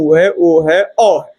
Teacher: ये आपका कंठ का प्रयोग, अर्थात जीभ के पीछे का जो हिस्सा होता है वहीं से जो है ये ध्वनियां निकलती